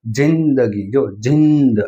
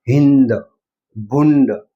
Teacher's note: શેના ઉપરથી સાબિત થાય છે તો કે જેનું ઉચ્ચારણ વધારે થાય જે અનુનાસિક વધારે બોલાય એને તીવ્ર કહેવાય છે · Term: તીવ્ર અનુસ્વાર